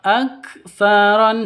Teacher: huruf hames. Harus ada nafas yang keluar. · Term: huruf hamas